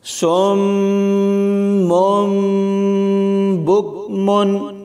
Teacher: یہاں صاد کو میم کے ساتھ ملائیں گے اور پھر میم کو اس چھوٹی میم کے ساتھ ملا کر پڑھیں گے، یعنی صاد میم پیش سم، میم میم دو پیش مم، سم مم، با کاف پیش بک، میم دو پیش من، بک من، سم مم بک من۔ صاد کو میم کے ساتھ ملاتے ہوئے غنہ ہوگا اور پھر میم کو میم کے ساتھ ملاتے ہوئے غنہ ہوگا